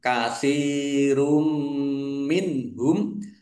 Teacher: Domah tanwin bertemu dengan huruf mim, bacaan idgham bi gunnah masuk dengan mendengung yaitu mendengung mim, ditandai mimnya ada tasdidnya.